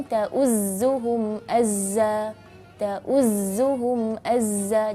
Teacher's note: Jadi rakhawahnya dia agak panjang, terus huruf safirnya sangat begitu jelas. · ketika huruf za bertasydid ini kita perhatikan suara safirnya agak sedikit kencang.